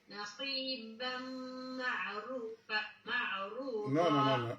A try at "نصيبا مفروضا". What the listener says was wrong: This is فاء letter. مفروضة. عين hasn't dot above it, but fa has a dot above it. مفروضة.